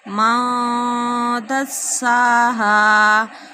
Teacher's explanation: نون ساکن کے بعد دال آ رہا ہے تو یہاں پہ اخفا ہو رہا ہے